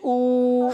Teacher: اور حمزہ حلق کے نیچے والے حصے سے ادا ہوتا ہے